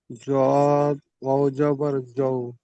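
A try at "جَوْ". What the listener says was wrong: জদ নই, জ।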